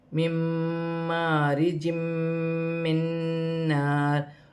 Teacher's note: نون مشدد ہے، یہاں پر ادغام مال غنہ کا قاعدہ ہے، ملا کر بھی پڑھا جائے گا اور غنہ بھی کیا جائے گا